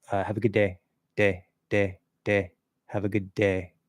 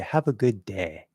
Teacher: So I wouldn't change it to an ah, but you can just use the first part of the diphthong